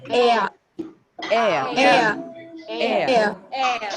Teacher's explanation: In British English or in native English, there is no R sound.